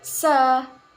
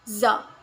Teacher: The sound sa is a voiceless alveolar fricative sound, and the sound Z is a voiced alveolar fricative sound.